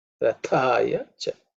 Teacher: The tha is the second letter in the tha varga, so it has to be aspirated.